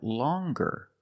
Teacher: But then you have longer where we have the hard G sound longer with a nasal sound M plus the hard G.